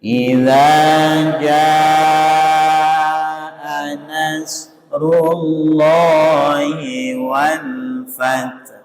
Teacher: Jadi tidak boleh bunyi wal fat, nanti haknya hilang, maknanya akan berubah gitu ya. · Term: hak sukun